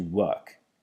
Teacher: Notice there that the R is gone because it's RP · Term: non-rhotic